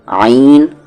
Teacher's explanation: आईन को बीच वाले हलक से बोलेंगे